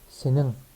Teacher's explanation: N ve G seslerinin birleşmesi de diyebiliriz. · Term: genizcil N